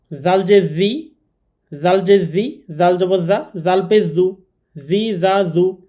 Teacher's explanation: জিহ্বার আগা থেকে নরম করে এটি উচ্চারণ করতে হবে নরমভাবে।